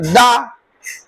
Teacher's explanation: दांत पर टच कर रही है जीभ तो दंत होगा।